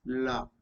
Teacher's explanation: the tongue touches the top of the mouth, top part of portion of the mouth, and air escapes from the sides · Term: laterals